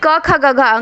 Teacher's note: क वर्ग का उच्चारण कंठ से